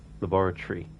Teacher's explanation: some people pronounce the t as ch sound when they say laboratory